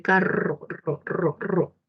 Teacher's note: la vibrante múltiple, que es cuando hay varios toquecitos, cuando se dice carro, ro, ro, ro.